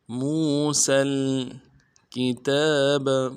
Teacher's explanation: سین سیٹی والا حرف ہے، سیٹی باریک ہوگی